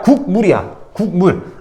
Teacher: 물에 있는 미음이 뭐야? 입술소리면서 비음이잖아요.